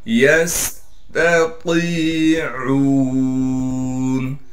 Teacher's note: یا کو سین سے ملا دیں گے اس لیے کہ سین ساکن ہے اور سین میں سیٹی نکالیں گے. یہاں پر اس بات کا ضرور خیال رکھیں، تا اور طا ایک جیسے دو حرف ہیں، لیکن تا باریک ہے، طا موٹی ہے.